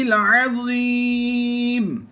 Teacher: زیر کو ہم نے پھر ایک بار وقف کی صورت میں جزم سے کنورٹ کرنا ہے اور اسے مد عارض کرتے ہوئے زیادہ لمبا کریں گے